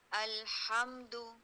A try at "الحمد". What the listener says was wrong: ابھی بھی آپ کی زبان چپک رہی ہے کہ آپ اٹھا لیتی ہے مخرج پہ؟ جلدی نہ کریں. الحمد.